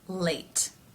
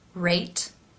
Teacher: in the L sound, the lips remain more neutral. In the R sound, they round somewhat. And sometimes, at the beginning of a word especially, they round a lot.